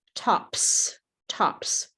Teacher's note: P p. No vibrate. Therefore, the plural is also no vibrate.